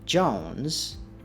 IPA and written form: ʤoʊnz (Jones)